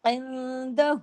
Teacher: الٹا پیش ہے نا، الٹا پیش واو کے برابر کھینچتا ہے